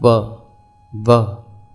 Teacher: वकारस्य दंतोष्ठम, अर्थात व का उच्चारण स्थान दंत और ओष्ठ है। जब हम व बोलते हैं तो दांत होठों का स्पर्श करते हैं, व। इस प्रकार से ये हमारा वर्णों का उच्चारण स्थान हुआ।